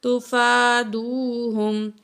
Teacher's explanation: فا کو کھینچیں گے 1 کاؤنٹ، واو ساکن ہے، ماں قبل پیش ہے، واو مد ہے، 2 کاؤنٹ کھینچیں گے